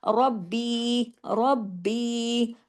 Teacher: रा को हैवी और सख्ती से बा के साथ जोड़ना है, रब्बी व रब्बकुम, दोनों जगह सख्ती से जुड़ेगी रा, दोनों जगह हैवी होगी। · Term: रा हैवी